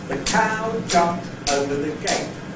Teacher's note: in that utterance, the rhythmic stress happens to coincide with the lexical stress of the word over. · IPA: /ðə ˈkaʊ ˈʤʌpmt ˈəʊvə ðə ˈgeɪt/